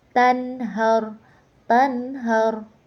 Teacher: Nah, di situ terdapat hukum bacaan izhar halqi. Karena nun mati bertemu dengan huruf halqi yaitu huruf ha. Jadi dibacanya jelas tidak boleh dengung